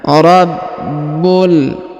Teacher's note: huruf ba berharakat tasdid maka kita tahan dan kita tekan